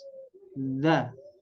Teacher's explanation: ujung lidah ya ujung lidah menempel ke gigi seri atas